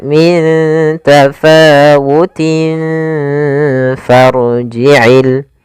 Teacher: Makhraj huruf fa sendiri yaitu gigi atas menempel dengan bibir bawah. Kemudian ditahan gunahnya. · Maka cara membacanya yaitu samarkan tanwinnya ke huruf fa. Maka min tafawutin langsung ke makhraj huruf fa. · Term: ikhfa